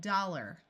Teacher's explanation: most of the time our mouth gets a little lazy and instead of saying the r sound clearly it becomes muffled and sounds more like dollar